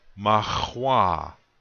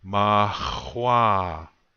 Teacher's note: The accent is going to be on the second syllable.